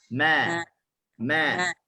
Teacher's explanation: kita sebut ma ni hujung lidah dia duduk bawah, dia infitah.